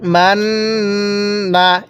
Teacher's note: মাননা নাকের বাঁশি দ্বারা গুন্না হবে